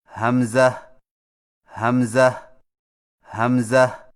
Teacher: حمزہ کی ادائیگی میں ہا کو بغیر کھینچے میم کے ساتھ ملائیں اور میم میں آواز کو لمبا نہ کریں